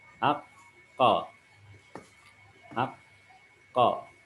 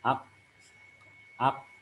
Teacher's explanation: Jadi pengucapan huruf qaf di sana. Huruf qaf diucapkan dengan mengangkat pangkal lidah kita menempel pada langit-langit bagian lunak.